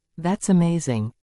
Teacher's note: To show excitement, we also use a rise in our intonation.